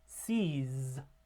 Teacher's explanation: So at the beginning there's no vibration, but by the end there's a lot of vibration. · So it starts with a voiceless alveolar fricative, s, and ends with a voiced alveolar fricative.